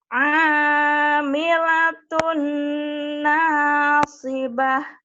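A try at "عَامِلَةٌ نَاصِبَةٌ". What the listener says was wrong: ingat jangan ke hidung. Aminatun nasib. Jangan ke hidung ya. Bagaimana cara ke hidung? Pernah saya kasih dulu triknya? Masih ingat nggak? Nanti di YouTube-nya kau ketik anjing lagi melonglong gitu ya, anjing hutan.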